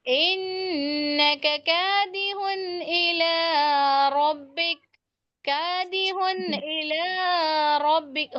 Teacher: جب ہم اظہار جی کر رہے ہیں، ظاہر کر کے پڑھ رہے ہیں بالکل، تو کوئی غنہ نہیں ہوگا.